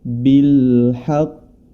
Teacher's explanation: Qalqalah yang ada di hadapan kita adalah Qalqalah di akhir dengan tasydid